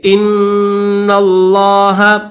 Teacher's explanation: वत्तकुल्लाह। इन्नल्लाह, हमजा को नून के साथ मिलाएंगे, नून को लफ्ज़ अल्लाह के साथ मिलाएंगे, गुना करेंगे